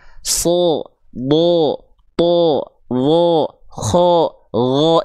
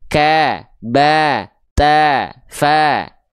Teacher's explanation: Contohnya huruf tebal itu ketika berharakat baris atas bunyi vokal yang keluar bukan bunyi vokal A, tapi bunyi vokal seperti O. Bukan betul-betul O yang dibulatkan tapi kedengarannya kayak O. · ketika teman-teman melafalkan fathah yang keluar dengan bunyi vokal a, tipiskan pelafalannya